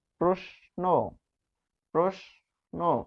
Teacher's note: তালব্য স এর সাথে যদি ন বসে প্রশ্ন, তখন এই তালব্য স হবে দন্ত স এর উচ্চারণ।